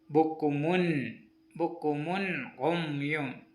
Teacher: ആ നൂന് എന്ന ശബ്ദം മണിപ്പിക്കാതെ വെളിവാക്കി ഓതേണ്ടതാണ്